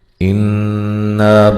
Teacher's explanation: نون مشدد پہ غنہ ضروری ہے